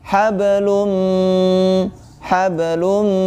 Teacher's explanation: huruf mim termasuk huruf ghunnah maka ditekan dan ditahan dua harokat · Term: Idgham Bighunnah, idgham bi gunnah